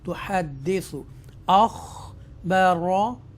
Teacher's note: ہم یہاں پر extra stress کے ساتھ اس کو ادا کریں گے، اس دال مشدہ کو